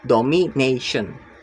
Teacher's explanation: The stress is on the third to last syllables.